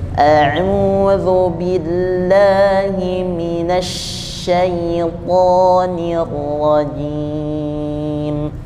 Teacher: auzubillahi minas pakai syin bukan pakai Sin